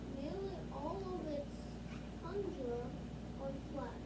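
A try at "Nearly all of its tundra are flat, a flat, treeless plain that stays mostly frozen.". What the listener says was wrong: That's a comma, not a period. So you pause there instead of, you just do a quick pause and then keep going instead of stopping.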